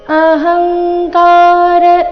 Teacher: ಅಹಂಕಾರ ಹ ಮೇಲೆ ಆಘಾತ ಗಮನಿಸಿ